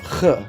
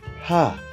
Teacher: In the ches, the window is blocked shut with a little fleck, a nakuda. The ches sounds guttural, ch, and the hey is airy, ha. The analog is that verbally, this very small window blockage prevents the air in the back of the throat to exit freely.